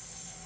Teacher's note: 让这个气流从这个很窄的一条缝里面，哎，流出来 ，就是变成这个嘶。哇，有的同学想，这么简单一个动作，你要讲这么多理论啊？啊，这个语音学是这样子的啊，有的同学因为他可能听不清或者他▁get▁不到这个感觉，那你只能用理论的方式啊帮助一些同学去理解啊，大家都可能会有这种情况。所以呢，如果你听得清楚，你能模仿那就最好了。如果你觉得很妙▁get▁不到，那你就去找这个很窄一条通道在你的舌尖跟上齿龈之间的感觉啊，让这个声音发出来，就是今天这个第一个主角了。我们把它记住啊，它叫做摩擦音，而且它是一个轻辅音还是浊辅音呢？有没有声带振动啊？没有声带振动，所以它是一个轻辅音，对吧？好，一个轻辅音，同时是一个摩擦音，就 · 啊，让这个气流从这个很窄的一条缝里面，哎，流出来，就是变成这个嘶。哇，有的同学想，这么简单一个动作，你要讲这么多理论啊？啊，这个语音学是这样子的啊，有的同学因为他可能听不清或者他▁get▁不到这个感觉，那你只能用理论的方式啊帮助一些同学去理解啊，大家都可能会有这种情况。所以呢，如果你听得清楚，你能模仿那就最好了。如果你觉得很妙▁get▁不到，那 你就去找这个很窄一条通道在你的舌尖跟上齿龈之间的感觉啊，让这个声音发出来